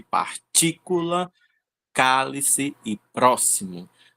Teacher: São as sílabas que têm a maior força da palavra e elas são proparoxítona, então elas são obrigatoriamente acentuadas, certo?